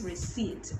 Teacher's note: the p is silent